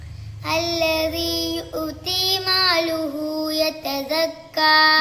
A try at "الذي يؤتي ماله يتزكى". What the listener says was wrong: ഇവിടെ യുഅ്തി മാലഹു, മാലുഹു എന്നല്ല മാലഹു. الذي يؤتي ماله يتزكى യതസക്കാ, ദാലും സാവും തമ്മിൽ മാറിപ്പോവാൻ പാടില്ല. യതസക്കാ.